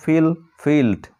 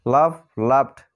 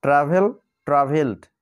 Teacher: এই সমস্ত ওয়ার্ডের শেষে আমরা ক, প, ফ, স, ড, ট, ই এই সাউন্ডগুলো না পেয়ে অন্য সাউন্ড পাচ্ছি, তাই ইডি এর উচ্চারণ আমরা ডর মতো পাচ্ছি